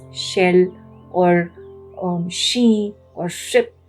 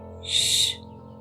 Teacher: it's a soft sound where the tongue remains straight and it stays near the top of the palate, right? So shh.